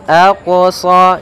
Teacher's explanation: ada bacaan qalqalah, yaitu huruf qafnya memantul